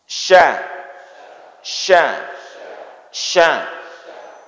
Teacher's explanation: huruf shin tidak ada urusan dengan bibir. Dia keluar dari tengah lidah.